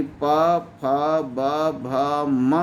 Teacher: जिन वर्णों के उच्चारण में दोनों ओठ एक दूसरे को स्पर्श करते हैं, उन्हें ओष्ठ वर्ण कहते हैं